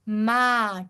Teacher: ماں کی آواز ناک میں بہت زیادہ نہیں گنگنائے گی